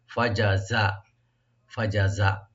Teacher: জিম জিহ্বার মধ্যখান থেকে, আর যা হলো জিহ্বার অগ্রভাগ নিচের দাঁতের পেট থেকে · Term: মাখরাজের